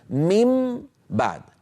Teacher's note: لاحظوا بأنني قلبت النون إلى ميم شفوية، والباء التي بعدها من الشفتين. فأنا هنا أطبق شفتي على ميم مقلوبة عن نون، يعني كانت من بعد، صارت الآن من بعد.